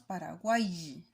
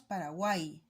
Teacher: esta Y tiene sonido vocálico de I, entonces no de Y. Por lo tanto, se toma en cuenta para la formación del triptongo.